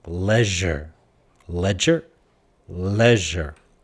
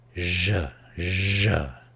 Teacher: You should be able to feel the vibration and the friction of je